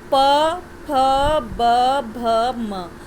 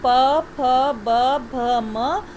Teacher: और जितने इसके प वर्ग के जितने व्यंजन है, चाहे वो प है, चाहे फ है, चाहे ब है, म भ है, म है, जितना वर्ण हम उच्चारण कर रहे हैं वो सब हमारे होंठों को छूता है। आपस में ऊपर नीचे वाले होंठ एक दूसरे को छूते हैं